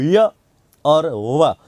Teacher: य और वा बोलने में जीवा संघर्ष नहीं करती, इसलिए इनको संघर्षहीन या अर्ध स्वर कहते हैं। तो इन्हें अर्ध स्वर भी कह देते हैं और इन्हीं को संघर्षहीन वर्ण भी कहते हैं।